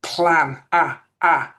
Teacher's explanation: the British version with quite a big wide-open mouth